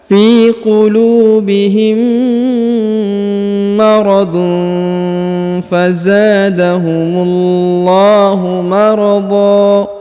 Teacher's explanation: Kalau kita lanjut, maka kita dengungkan ya. Tanwin bertemu fa, maka didengungkan dan disamarkan ya